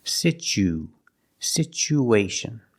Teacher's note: Together, situ. So the T makes a ch sound, like chicken.